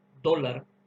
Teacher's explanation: cuando utilizamos la D de dado, pegamos la lengua al paladar